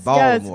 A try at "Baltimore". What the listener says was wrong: No T in there, Baltimore, right?